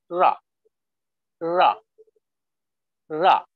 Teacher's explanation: It is very light, right? And there is no vibration. So that is the difference between Indian ra sound in Indian languages and English. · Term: English ra